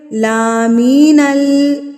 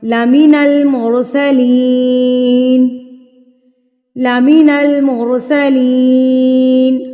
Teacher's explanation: لا کو بالکل بھی نہیں کھینچنا، لا کو بالکل بھی نہیں کھینچنا، می کو بالکل بھی نہیں کھینچنا